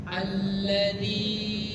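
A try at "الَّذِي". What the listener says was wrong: Jangan panjang-panjang, itu matlabi dua saja.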